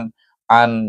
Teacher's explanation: an jangan panjang kalau panjang dia akan berdengung